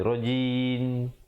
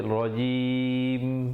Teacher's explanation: tutup mulut rapat menyempurnakan bunyi mim. Kalau tidak dia dengar seakan-akan bunyi nun nanti.